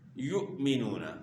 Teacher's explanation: آخر ہے، اور یہاں جو ہے حمزہ جو ہے ساکن ہے، تو جب بھی حمزہ ساکن ہو اس کے اندر جھٹکے کی آواز ہوتی ہے